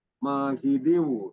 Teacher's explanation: dalnya itu tanwin berhadapan dengan wa, menjadi idgham biguna dibaca hidiu ditahan 2 harokat.